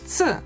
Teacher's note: Another consonant which is always hard is ц. Ц consists of two sounds pronounced together, t and s. So to say ц, you pronounce t and s together and very close to each other.